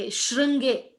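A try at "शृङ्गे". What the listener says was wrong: shringe அவ்வளவுதான். Okay, because shruனாக்க ஊ வந்துடும். There is no u in this, it's just shringe. English வந்து they might have probably put I potentially. shringe, shri.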